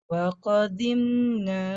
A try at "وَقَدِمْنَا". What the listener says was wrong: Jangan وقدم jadi ضاد.